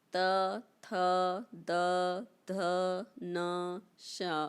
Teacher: अब दंत, री, त, थ, द, ध, न, श, ये कैसे हो गए दंत, क्योंकि हमारी जो जीभ है वह किससे स्पर्श कर रही है, दांतों से